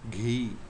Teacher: Gh, aspirated G. No English equivalent